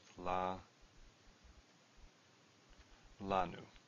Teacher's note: lanu has a stress on the first one